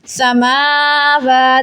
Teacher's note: دو کھڑا زبر ایک جگہ آ رہے ہیں تو آپ نے دونوں کو ایک ایک الف کے مقدار کھینچنا ہے کہ جتنی دیر میں آپ اپنی بند مٹھی میں سے ایک انگلی کو کھولیں اتنی دیر آپ نے اس کو کھینچنا ہے.